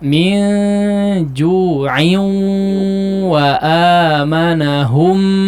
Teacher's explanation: Itu ditahan gunnahnya agak lama ya.